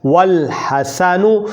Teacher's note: لام تعریف کا حمزہ، جسے عام طور پر ہم الف کہتے ہیں، لکھنے میں تو موجود رہتا ہے لیکن تلفظ میں گر جاتا ہے